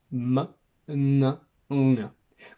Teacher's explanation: A nasal sound is when the velum is lowered and the air flows through the nasal cavity.